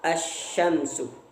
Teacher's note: idgham syamsiyah, yaitu memasukkan al dengan huruf setelahnya, seperti asy-syamsu.